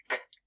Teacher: notice how your voice stays off for this sound